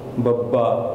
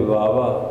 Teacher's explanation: ਜਦੋਂ ਅਸੀਂ ਬੱਬਾ ਬੋਲਦੇ ਹਾਂ ਸਾਡੇ ਬੁੱਲ ਆਪਸ ਦੇ ਵਿੱਚ ਮਿਲ ਕਰਕੇ ਕਸੇ ਜਾਂਦੇ ਨੇ ਬੱਬਾ। ਜੇ ਉਹਨੂੰ ਥੋੜ੍ਹਾ ਢਿੱਲਾ ਪਾਵਾਂਗੇ ਫਿਰ ਵਾਵਾ, ਕਿਉਂਕਿ ਫਿਰ ਬੁੱਲ ਪੂਰੇ ਨਹੀਂ ਕੱਸਦੇ।